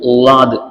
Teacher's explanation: மேலு உள்ள இடதுபுறம் கடவாய் பற்கள்ல நாக்க வச்சு உலாதுங்கிற வார்த்தை உச்சரிக்கணும்